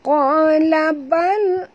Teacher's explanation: lam ni matikan betul-betul bunyi dia bal tongkatkan lidah ke langit ya